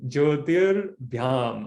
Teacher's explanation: we have Visarga followed by a soft consonant Bha. So this Visarga becomes Refa.